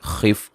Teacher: خا کو موٹا ادا کریں گے. میم ساکن کا اظہار ہے.